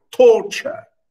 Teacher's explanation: a stressed syllable followed by an unstressed syllable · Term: trochi